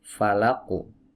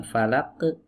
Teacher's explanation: karena huruf qaf ini adalah huruf tebal yang memiliki sifat istila, maka pantulannya pun harus tebal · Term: qalqalah